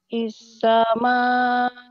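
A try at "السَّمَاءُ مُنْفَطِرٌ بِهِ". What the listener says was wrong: bukan is. kalau disambung ya sibanis. Bukan is, nis ya. Kalau ya, disambung, kalau enggak disambung tetap asama. As-sama'u mufattirum bih.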